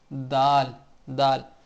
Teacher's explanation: आधे हिस्सा से लगे तो दाल अदा होता है यानी कि अगले दो दांतों के पीछे जब जुबान लगती है तो दाल अदा होता है